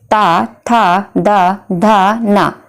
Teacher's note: जो आपकी जीभ है, जीभ का जो भाग है, जो आपके ऊपर के दांत होंगे वो उनको टच करेगी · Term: दंतीय